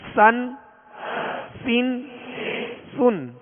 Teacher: اب سطر نمبر 4 میں سین دو زبر سن، سین دو زیر سن، سین دو پیش سن، سن سن سن. اس کو باریک پڑھیں گے اور سیٹی کی آواز میں پڑھیں گے